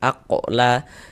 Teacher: Dan ini dia masuk kepada qalqalah kecil, qalqalah sughra karena dia berada di tengah kalimah. Atau yang paling mudah untuk kita ingat dan kita pahami itu karena dia berada di tengah bacaan kita. · Ini huruf qaf sukun pantulkan. Aqla. Dan ini dia masuk kepada qalqalah kecil, qalqalah sughra karena dia berada di tengah kalimah.